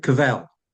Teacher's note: in French, the stress is on the second syllable, the last syllable.